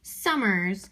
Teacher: I knew that some was stressed and murs so that second syllable of the word was unstressed